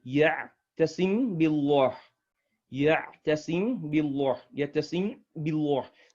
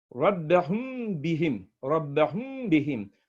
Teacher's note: there has to be a gunnah. That means a nasal sound, duration of 2 harakah